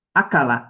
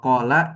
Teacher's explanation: kalau kof itu makhrajnya kan di aksal lisan ya, di pangkal lidah